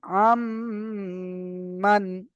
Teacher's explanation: এখানে নুন সাকিনের পরে মিম এসেছে, আর মিমটা হলো ঈদগামে নাকিসের অক্ষর, ওই জন্য করে নুন সাকিনকে মিমের সাথে মিলিয়ে একালি পরিমাণ গুণনা করে পড়তে হবে।